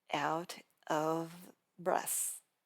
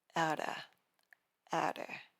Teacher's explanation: Drop the V and stay relaxed. Change out of to outer. Keep your mouth completely open and relaxed.